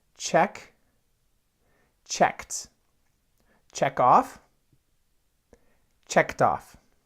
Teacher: We don't say check ed. We actually make the T sound in English, just like if it ends in an X or a K sound, we'll say checked, checked off.